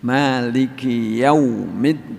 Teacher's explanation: Maliki tapi Maliki ada Hames nasi kit itu namanya sifat huruf sifat hurufnya Kaf itu punya hams